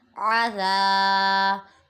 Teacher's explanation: ذال پہ الف مدہ اور اسے بغیر سیٹی کے ادا کریں گے، اور با منون۔